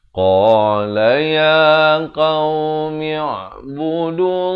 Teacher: Lafaz jalalah di sini dibaca tebal.